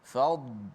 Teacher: Maka hati-hati pada kalimah fadla, dad mati, jangan bunyi qalqalah. Fad tebal tapi tanpa qalqalah. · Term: dad tebal